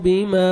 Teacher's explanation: الف مد ہے, 1 سیکنڈ میم کو کھینچنا ہے